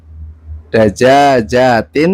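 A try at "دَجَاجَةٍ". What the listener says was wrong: Tadi daja jatin salah kan? Kan panjang, yang kedua panjang. Sama-sama panjang.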